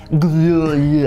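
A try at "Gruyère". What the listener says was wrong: Well, no, you don't really pronounce the R. You don't just skip it. You go Gruyere.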